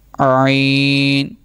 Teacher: حلق کے درمیان والے حصے سے یہ ادا ہوگا